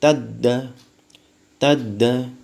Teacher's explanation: pada saat dia mendapatkan tanda baca tasydid, maka tidak ada pantulan, langsung tadda, tadda. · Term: qalqalah